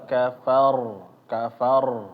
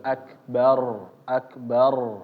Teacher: huruf ro ditambah lagi walaupun tebal tetap ada getarannya.